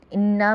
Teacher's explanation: انا میں غنہ ہوگا، نون مشدد اور میم مشدد میں غنہ ہوتا ہے